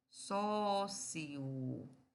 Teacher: quando se vai pronunciar você pode pronunciar assim ó sócio fazendo o hiato